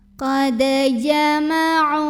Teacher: maka cara bacanya dipantulkan dalnya dengan pantulan yang kecil dan tetap dialirkan. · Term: qalqalah sugro